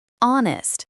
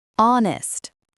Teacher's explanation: The H at the beginning is silent.